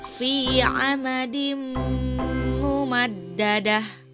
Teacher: Pada kalimat fi amadim mumaddadah, perhatikan ya, di sana ada huruf dal berharokat kasroh tain menghadapi huruf mim, maka itu disebut idgham bigunnah dan harus dibaca dengan dengung